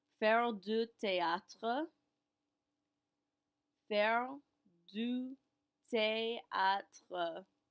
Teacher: remember our th is still pronounced like a regular t